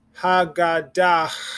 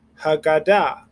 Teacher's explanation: We don't breathe in an H at the end. · At the end of the word, the H is silent.